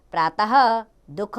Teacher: हल्के ह की इसकी ध्वनि होती है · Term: विसर्ग